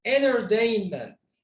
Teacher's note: Tah sound at the end becomes redundant. It's like not existed anymore.